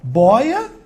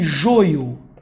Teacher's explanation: boia, timbre aberto. Vamos supor que joio, timbre fechado